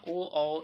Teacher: ओ, औ, इसका उच्चारण स्थान कंठ और ओष्ठ हो जाएगा।